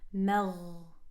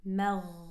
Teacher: Keep that ghain heavy.